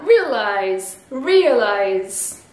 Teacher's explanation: Le E devient un I et le A se prononce E. E. Donc on a realize, realize.